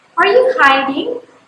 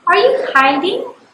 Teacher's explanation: the tone of my voice rises at the end of the question